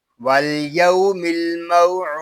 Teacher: الموعود دال زیر دی الموعود، اور وقف میں پڑھیں گے والیوم الموعود. یہاں وقف میں قاعدے ہوں گے مد آرس، دال ساکن میں کلکلا اور وقف بالاسکان. واو زبر وا شین الف زبر شا وشا، شین کو ہم ایک الف تک کھینچ کر پڑھیں گے کیونکہ یہاں الف مدہ ہو رہا ہے.